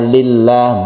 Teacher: lamnya ini disebut lam jalalah yang dibaca tarqiq atau tipis karena sebelumnya ada kasroh